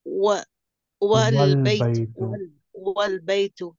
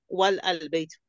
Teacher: the alif is dropped and it's pronounced wal baytu, not wal al baytu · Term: Hamzatul Wasl